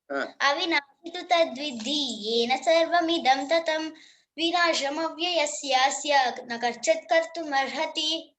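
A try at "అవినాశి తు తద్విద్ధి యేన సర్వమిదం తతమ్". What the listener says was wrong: Excellent. బాగా చెప్పినావు. Very good.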